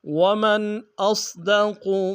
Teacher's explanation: حمزہ کو صاد کے سامنے آئیں گے، صاد کو موٹا ادا کریں گے، قاف کو موٹا ادا کریں گے۔